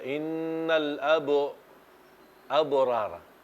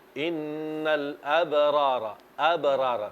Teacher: Qalqala di sini qalqala sughra, artinya qalqala kecil, tidak perlu didammahkan.